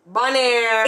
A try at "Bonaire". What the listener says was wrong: It's not Bonaire. It's a Bonari. Air is Ari.